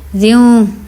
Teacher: واو کی جو ہے آواز نکال لیں گے، جو گول آواز ہے